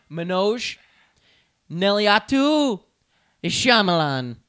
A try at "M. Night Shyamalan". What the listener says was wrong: Why did you pronounce it like that? Yeah, but you pronounced it like you were like Shamalamana because you did it with an accent.